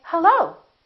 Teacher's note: when I answer the phone, I can say hello. So the pitch goes up. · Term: rising intonation